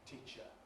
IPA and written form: ˈtiːʧə (teacher)